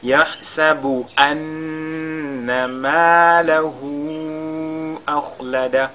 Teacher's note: on fera ghunna sur la lettre nun mushaddada